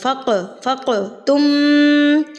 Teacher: क़ाफ़ के ऊपर जब ये जज़म होती है यानी कि ये साकिन होती है तो क़ाफ़ को भी कलकला पढ़ा जाता है, यानी कि हिला के थरथराहट से।